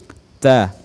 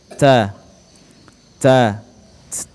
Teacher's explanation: Huruf ta mempunyai sifat al-hamz, yaitu mengalirnya suara. Ta, ya, terdengar ada suara nafas yang keluar.